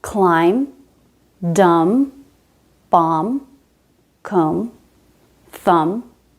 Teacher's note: We don't pronounce B after M. Climb, dumb, bomb, comb, thumb. All of these end in the M sound.